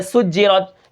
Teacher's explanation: سین کی سیٹی کو ہم برقرار رکھیں گے اور سین کو جیم کے ساتھ ملا کر پڑھیں گے، وہ اس لیے کہ جیم کے اوپر شد ہے، یعنی تشدید ہے۔